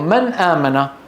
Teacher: النون من أين؟ من طرف اللسان. أن الهمزة من أين؟ من أقصى الحلق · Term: إظهار